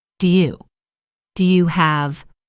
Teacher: In natural, relaxed American English, the words do and you often get pushed together and reduced. It can sound like du.